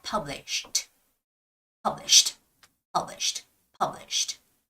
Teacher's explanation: the ed sound is shortened to T sound so it's more like published published published published okay so a · And as always, when a word ends with an SH, and it's connected with ED, the ED sound is shortened to T sound